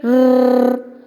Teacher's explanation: If we say rrr, the tongue tip tapping against the teeth ridge. The sound produced is a trill. It is considered typical of Scottish English.